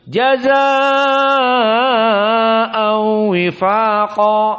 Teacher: Dibaca dalam keadaan panjang 6 harokat. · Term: al-isba